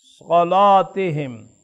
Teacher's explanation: اب صاد مفتوح ہے تو لام میں تغلیظ ہوگی